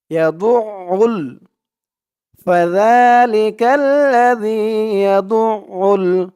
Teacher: আইনের উচ্চারণটা খেয়াল করবেন, আইনের উচ্চারণটা করার সময় গলার ভিতর থেকে উচ্চারণটা আসবে, আওয়াজটা আসবে।